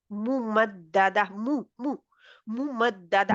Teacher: पेश के लिए वैसे तो होठ ही है मीम का मखर है ना लेकिन पेश के लिए इनको गोल किया जाएगा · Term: होठ गोल, होंठ गोल